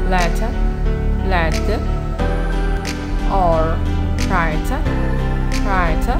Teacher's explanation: This sound is produced by the tongue tip tapping the alveolar ridge briefly. Many American English speakers tend to flap the T and T consonants between vowels, so that in casual speech, the pairs letter, letter, or writer, writer do not have distinct middle consonants.